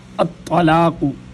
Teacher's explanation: یہاں پر طا کو موٹا پڑھا جائے گا، ایک تا ہے باریک تا اور ایک طا ہے۔